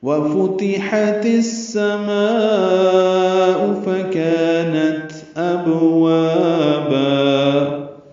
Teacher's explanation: واو ہونٹوں کی نا تمام گلائی سے ادا کریں گے. فتح پیش زیر زبر تینوں حرکتیں معروف طریقے سے پڑھیں گے.